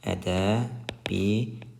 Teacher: Ədəbiyyat sözündə isə y-nin birisi düşdü.